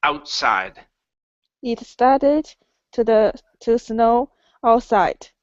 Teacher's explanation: That time you didn't add a vowel in between your T and your S.